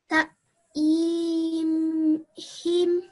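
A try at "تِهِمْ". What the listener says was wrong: So it's the ta sound that you're making longer. So it would be ta, the, him.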